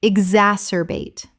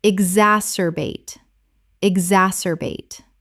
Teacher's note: ex-as-cer-bate Correct pronunciation. exacerbate Four syllables with the stress on the second. · 4 syllables with the stress on the second.